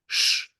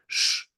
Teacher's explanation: at the front of your mouth sh with the tongue pulled upwards